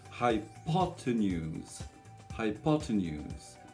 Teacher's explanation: J'ai d'abord le son high, ensuite j'ai l'accent qui sera donc sur la deuxième syllabe, hypo. Ensuite j'ai un T avec un E à l'envers, c'est le cheval, le E muet, hypotenuse.